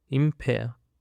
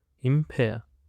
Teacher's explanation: It consists of two syllables, and the stress is on the second syllable.